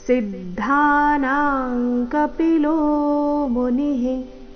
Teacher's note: ಸಿದ್ಧಾನಾಂ ಸಿ ಮೇಲೆ ಆಘಾತ